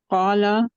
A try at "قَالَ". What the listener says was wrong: اچھا لام کے آگے الف ہے. لام کے آگے الف نہیں ہے نا. تو قالا کہیں گے پھر؟ قال लाम को नहीं खींचेंगे।